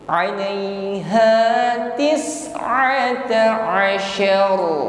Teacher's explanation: Huruf ain keluar dari makhraj wasatul halqi, sifatnya tawassut lunak saja. Bukan a. Alaiha sin sukun hamas, nafas alirkan.